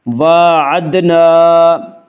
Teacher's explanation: وَعَدْنَا، الف مدہ، الف ہمیشہ مدہ ہوتا ہے، الف سے پہلے ہمیشہ زبر ہوتا ہے، الف مدہ کو ایک الف کے برابر کھینچ کر پڑھیں گے